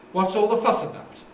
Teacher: Nucleus on fuss, because about is a preposition.